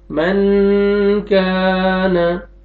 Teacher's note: आगे यहाँ पे अलिफ मद है, अलिफ से पहले फतहा और आपने काफ को खींचना है